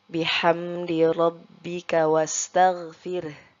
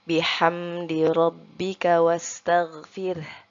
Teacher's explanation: huruf ha-nya itu tetap kita baca dan tidak hilang Nah maka pada huruf ro sukunnya itu kita seperti menambahkan huruf e Namun kita baca samar-samar saja